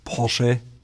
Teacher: for some people that may sound like there's no R there at all, but it's still there, it's just very silent.